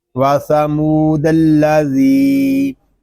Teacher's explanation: یہاں ذال کو ایک الف تک کھینچ کر پڑھیں گے کیونکہ یہاں پہ یا مدہ ہو رہا ہے۔ یا مدہ اس لیے ہو رہا ہے کہ یا ساکن سے پہلے زیر آ گیا ہے۔